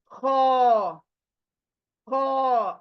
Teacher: ये हलक का जो गर्दन का जो पूरा पार्ट है ऊपर के पार्ट से ख आदा होगा